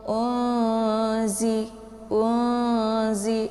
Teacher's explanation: Jadi nun sukun bertemu dengan huruf zai, cara bacanya yaitu disamarkan bunyi nunnya siap-siap masuk ke huruf zai. Jadi suaranya itu ditahan sampai masuk ke ingus atau hidung. Unzi, unzi, jangan dibaca juga tidak boleh dibaca jelas, ya. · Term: ikhfa awsat